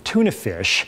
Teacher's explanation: when t, the sound t is word initial in tuna fish, it is what linguists call, aspirated.